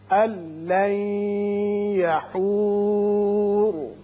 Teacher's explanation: یہاں نون ساکن کے بعد لام ہے، ادغام بغیر غنہ ہوگا